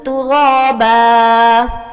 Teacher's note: را کے اوپر کھڑا زبر اس کو موٹا پڑھیے